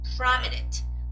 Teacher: The stress goes on the first vowel, so it's not prominent, it's prominent.